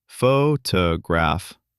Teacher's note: For example, photograph. The stress is on the first syllable. Photograph, not photograph.